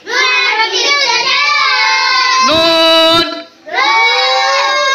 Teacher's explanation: জিহ্বার আগা তার বরাবর উপরের তালুর সঙ্গে লাগিয়ে নুন হরফটি উচ্চারিত হয়